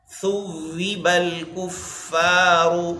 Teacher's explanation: ثا ادا کرنا ہے، سین نہیں، زبان کا کنارہ سامنے کے دانتوں کے کنارے کے ساتھ لگا کر